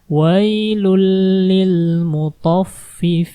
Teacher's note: Wailul, bukan wailun, tapi lunnya masukin ke lam, wailul li, seperti itu.